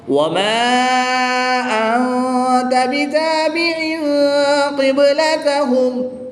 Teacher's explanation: تنوین کے بعد قاف حرف اخفا میں سے ہے، تو یہاں پر اخفا ہوگا یعنی غنہ زمانی کر کے پڑھیں گے